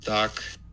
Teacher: you get your release burst remember k's have this little peak here of intensity right around 1,500 Hertz and then you get this aspiration